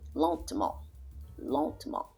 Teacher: The E after the T sound, you don't hear it. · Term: silent E